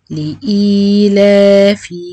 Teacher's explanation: لام كسرة لي، ألف همزة كسرة إي، يا مد بدل حركتين إي، لام فتحة، ألف مد طبيعي حركتين لا، فا كسرة في، لإيلافي. أراعي إن أنا الهمزة تبقى حركتين واللام برضو حركتين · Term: المد البدل